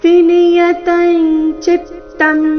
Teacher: ಅನುಸ್ವಾರದ ಉಚ್ಚಾರಣೆ ಚ ವರ್ಗದ ಅನುನಾಸಿಕದ ರೀತಿ ಮುಂದಿನ ಶಬ್ದ ಚಿತ್ತಂ ಚ ದಿಂದ ಪ್ರಾರಂಭವಾದ ಕಾರಣ